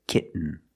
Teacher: you do the stop T kit you don't release and then you fall to an N kit when you make the stop T the tongue is up